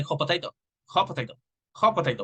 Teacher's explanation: We eliminate the T because we are combining the two words